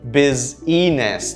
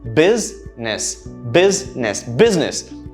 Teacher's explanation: and i've heard this quite often um and this is incorrect the correct pronunciation only has two syllables the stress in the first syllable